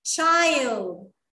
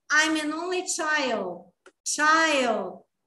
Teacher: O D faz que vai, mas não vai.